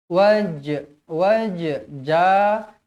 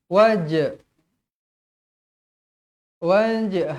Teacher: Huruf jim berada di tengah-tengah kalimah yang bertanda mati, hukumnya qalqalah sughra. Macam mana qalqalah sughra? Wajib dibaca melantun.